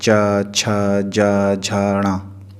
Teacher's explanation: जब हम चा बोलेंगे तो हमारी जीभ ऊपर तलुए में जा कर के छूती है